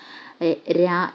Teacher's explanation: ദൃതസ്പർശം പെട്ടെന്ന് സ്പർശിച്ചു പെട്ടെന്ന് മാറും ര എന്നുള്ളതാണ് അതിന്റെ ഉത്തരമായിട്ട് വരുന്നത് ഓക്കേ അടുത്തത് പാർഷികമാണ് നമ്മുടെ ഓപ്ഷനിൽ ഉണ്ടായിരുന്ന